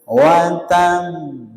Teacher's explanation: Kalau misalnya tanpa tasdid maka bunyinya watab watab gitu nggih. Gara-gara ada tadid harus ditahan dulu baru dipantulkan. Watab. Nah, saya ulangi lagi. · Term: qalqalah, huruf qalqalah